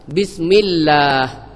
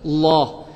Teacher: Lam sini iaitu tarqiqkan atau nipiskan lam pada lafzul jalalah. Kena menipis.